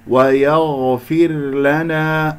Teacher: الغين مفخمة مرتبة رابعة لأنها ساكنة